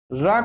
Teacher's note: वर्त लुंठित सघोष अल्पप्राण व्यंजन